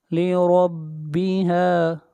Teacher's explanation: را کو موٹا پڑھیں گے، را کے اوپر زبر ہے